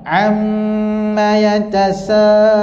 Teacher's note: Untuk mim, dengung dia kat hidung lah. Dan cara sebutannya lekatkan dua bibir ni. Lekat. Jangan tak ada dekat sebab mim tu keluar daripada dua bibir asyafatain.